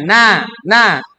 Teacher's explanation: Ketika misalnya telapak tangan kalian diletakkan di depan mulut kalian, kita ucapkan misalnya nah, itu nggak ada udaranya. Kalau ada udaranya nah, seperti itu. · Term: huruf nun